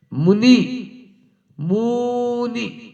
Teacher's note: बोलते हैं दीर्घ को मुनि मुनि अब ये क्या हुआ अब मु को तो कर दिया आपने बड़ा और नी को कर दिया छोटा